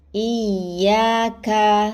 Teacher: Pangkal lidah bertemu dengan langit antara langit keras dan langit lunak.